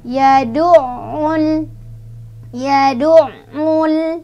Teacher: ditekan sedikit ya karena ainnya ada tasydidnya